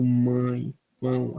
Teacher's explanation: a gente vai ter né uma pronúncia anasalada e por consequência mais fechada a boca né tipo mãe não a boca fica muito mais fechada do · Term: ditongo